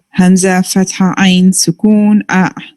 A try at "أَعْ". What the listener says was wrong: When you did it's like, we just like jerked over here. We're not going to do that. Keep it running and flowing. And just as Sister Shazia said, let the sound go from bottom to upwards.